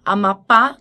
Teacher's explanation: Amapá tem como sílaba mais forte o pá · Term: oxítonas